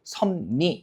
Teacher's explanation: 뒤쪽에 리을이 니은으로 발음되고 그 다음에 니은 때문에 앞에 있는 비읍이 뭐로 발음돼요? 미음으로 발음되죠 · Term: 비음화